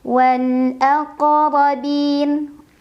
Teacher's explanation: Ro-nya dibaca secara tafkhim karena ro berbaris dan barisnya di atas. Maka bacanya tebal.